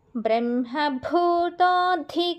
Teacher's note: భూతోలో బకి మహాప్రాణము ధిలో ద కి మహాప్రాణము